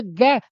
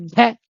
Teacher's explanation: तो ग के बाद में जो घ बोलेंगे तो हवा ज्यादा निकलेगी। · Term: महाप्राण